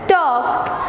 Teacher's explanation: So the letter L is not pronounced when you say talk. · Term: silent letter